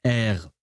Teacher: it's an R, but it's from the back of your throat. And I know that English speakers really struggle with that one because because English speakers are really not used to that. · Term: the R in French